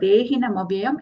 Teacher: In this word, dehina mavyayam, except for de, rest are all short sounds.